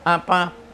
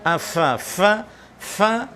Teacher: Afala tentunya berbeda dengan abala atau apala, apa dengan tertutup. Afa, fa tidak tertutup.